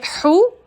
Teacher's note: سانس کی نالی کے درمیان میں جگہ زور لگائیں گے، ہونٹوں کو گول کریں گے